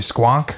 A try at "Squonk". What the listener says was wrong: Squonk. You really gotta enunciate the onk.